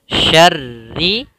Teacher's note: ro yang pertama tebal yang kedua tipis